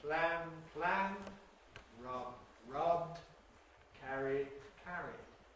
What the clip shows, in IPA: plænd